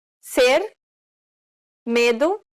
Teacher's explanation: This is known as the closed E sound in Portuguese.